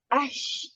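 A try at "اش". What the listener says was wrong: Well done.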